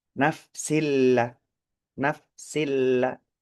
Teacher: Kemudian nafsillah di situ kasro tanwin bertemu dengan huruf lam itu hukumnya ada idgham bila hunnah atau bi ghairi hunnah atau hanya idgham. Tidak mendengung lama, hanya sebentar memang.